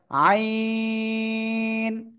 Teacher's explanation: গলার ভিতরে আওয়াজটাকে একটু চেপে ধরে চার আলিফটা নিয়ে উচ্চারণ করতে হবে